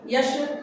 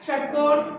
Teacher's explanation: तीनों स का उच्चारण तीन जगह से एक का होता है तालु से यश एक का होता है मूर्धा से षट्कोण एक होता है दंत से